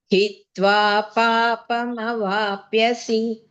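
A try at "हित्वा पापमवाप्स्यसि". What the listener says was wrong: Vapsyasi. Vapsyasi. Vapyasi is not there. Vapyasi no. Vapsyasi. Vapsyasi. Sa also.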